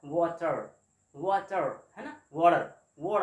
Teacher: तो एक ये जो फड़फड़ाने का सेंस आता है उसी को हमने फ्लैप सेंस कहा है, और उसी के कारण ये लुंठित कहलाता है।